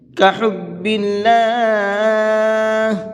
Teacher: یہاں پر اللہ کے لام کو باریک کر کے پڑھیں گے، اس لیے کہ یہاں پر بھی اللہ کے لام سے پہلے زیر ہے۔